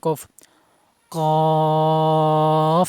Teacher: কফ হরফ মাকরাজ জিহ্বার গোড়া, তারপর উপরে তালুর সাথে লেগে উচ্চারণ করতে হবে। কফ, কফ। এত মোটা করা যাবে না।